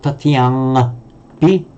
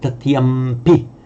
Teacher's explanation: It's not tatiyangpi, but tatiyampi, because the sound, the nasal before a labial here, the p, wants to join it and become a labial as well. So we say tatiyampi.